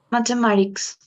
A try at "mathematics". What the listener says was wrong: Mathematics. Mathematics. Te comes esta E te la vas a comer completamente, te la regalo. Tuya, adiós, goodbye. No más de eso. Math, o sea, hasta casi con la lengua entre los dientes. Mathematics. Mathematics.